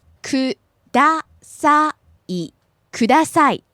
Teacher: So starts out low, rises in the middle, and back down at the end. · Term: pitch accent